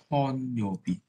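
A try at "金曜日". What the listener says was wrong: Bukan konyobi, kita ada kinyobi. Kin bukan kon. Kinyobi.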